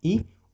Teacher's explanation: जीभ का अगला वाला हिस्सा वो ऊपर उठ रहा है, और ऊपर उठने का मतलब ये है कि हम इस स्थान से 2 स्वरों का उच्चारण करते हैं, एक ई और एक है हमारा दीर्घ ई। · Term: तालव्य स्वर